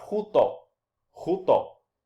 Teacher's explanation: Ainda que o espírito seja colocado sobre a segunda vogal, eu leio o espírito áspero, ou seja, eu pronuncio o espírito áspero, solto esse sonzinho de R, no início da palavra, como se o espírito estivesse colocado sobre a primeira vogal.